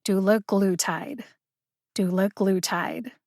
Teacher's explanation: are four syllables in doulaglutid according to the usp dictionary online glue gets the primary emphasis dew gets the secondary emphasis that means that you need to emphasize glue longer and louder than the other syllables dew gets almost as much emphasis as glue one more time · you need to emphasize GLOO longer and louder than the other syllables. Do gets almost as much emphasis as GLOO.